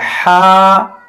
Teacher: دیکھیے، اس میں بھی تھوڑا نرمی ہے، یہ بیچ حلق سے ادا ہوتا ہے، حلق کے درمیان سے، اس میں ٹھنڈا ہوا محسوس ہوتا ہے۔